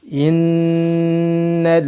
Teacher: nun bertasydid, ditahan 2 harakat, disertai dengan gunnah. Nal lam sukun bertemu dengan hamzah dibaca izhar.